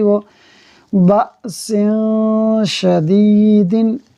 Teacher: تنوین کا جو نون ساکن ہوتا ہے وہ ہم نے نہیں پڑھا، اس کو چھپا دیا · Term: اخفا